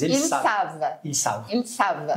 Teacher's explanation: esse ENT, quando ele está num verbo, geralmente ele está fazendo a terceira plural do plural no presente, nesse caso, a gente não pronuncia